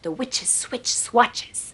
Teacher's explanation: almost whistle that SW blend